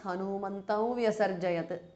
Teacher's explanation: Hanumantam ends in anuswara followed by va. So it becomes Hanumantam vyasarjayat. Anuswara changes to the nasal of va.